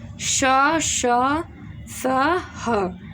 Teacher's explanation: उष्म व्यंजनों को बोलते समय वायु मुख से बाहर निकलती है अतः वह उष्म होती है और सीटी जैसी आवाज़ आती है।